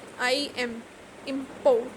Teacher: the stress is on the first one, im, import